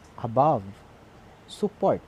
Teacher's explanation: it is a unstressed syllable followed by stress syllable · we pronounce this word as a above support above support so as you notice we're putting stress in the second syllable of the word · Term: iambic meter